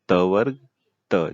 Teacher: जब आप बोलेंगे त तो आपको लगेगा दांत आपका टच हो रहा है